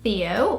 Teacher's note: If you're British, you probably say Theo with the TH sound. But no, in Brazil, you would not get Theo, you would get Théo.